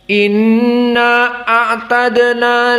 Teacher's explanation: dalam keadaan qasr, maka hanya dibaca dua harokat.